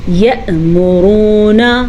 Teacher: حمزہ پہ ساکن ہے تو ہلکا سا جھٹکا پیدا ہوگا. را کو پر پڑھیں گے اور واو مدہ کو کھینچ کے پڑھیں گے.